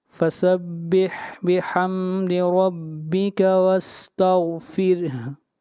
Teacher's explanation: اگر یہاں پر وقف کریں گے تو ہا کی حرکت گر جائے گی اور ہا ساکن ہو جائے گی